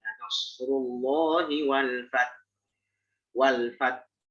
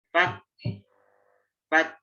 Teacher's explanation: setelah ta, ya, kita memberikan sifat hams pada ta, kita juga berikan sifat hams wakaf pada ha.